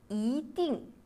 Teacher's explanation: lorsqu'il est suivi d'un quatrième ton, i se lit au deuxième ton.